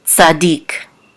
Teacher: we know that the accent is on the last syllable, dik, tzadik.